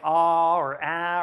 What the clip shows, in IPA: ɑ or æ